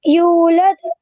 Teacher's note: यहाँ पे दाल पे कलकला आएगा और वाव मद्दा है